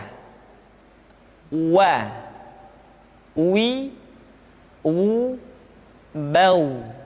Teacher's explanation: diucapkan dengan cara memancungkan dua bibir kita